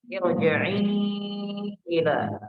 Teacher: i-nya di sini panjang dan panjangnya itu agak lama, Pak ya, karena ini adalah mad jaiz munfasil. Ada mad ketemu dengan hamzah dalam 2 kata.